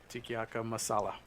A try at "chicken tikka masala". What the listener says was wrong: Yeah, chicken tikka masala. He added too many letters.